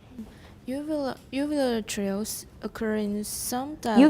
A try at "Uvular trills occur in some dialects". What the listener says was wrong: Uvular trills, it's not a compound. When you have single syllables with stress, what do you have to do? Slow down and leave a pause.